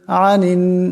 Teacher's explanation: এখানে নুন মোশাদ্দাদ নুন মুশাদ্দাদের এক পরিমাণ গুন্না হবে